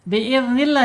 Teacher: Kenapa dibaca tarkik? Ya karena lam jalalahnya sebelumnya harakatnya kasrah. Kemudian jangan lupa penekanan di huruf lam walaupun tarkik di tekan ya di huruf lnya. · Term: lam jalalah tarkik